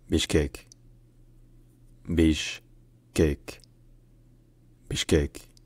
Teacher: In Kyrgyz, the city is pronounced Bishkek. Bishkek, with the emphasis on the last syllable